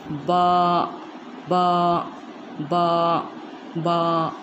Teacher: बा का मखरज है दोनों होठों के मिलने से, मतलब जो अपना गीला हिस्सा मिलेगा होठों का, उससे ये अदा होगा।